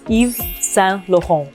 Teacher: And the R is nice and throaty.